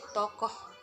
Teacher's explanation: agak rendah belakang bulat